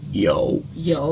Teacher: You kind of get that like little bit of a gargly back of your throat kind of sound. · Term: third tone